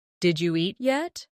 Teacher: When spoken quickly, it sounds like jeet yet. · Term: connected speech